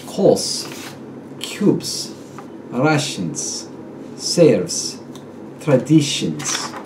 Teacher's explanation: The final Z becomes S